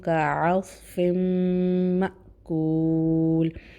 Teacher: حمزہ جو ہے وہ مأکول تھوڑے جھٹکے سے پڑھیں گے، ساکن ہے اس لیے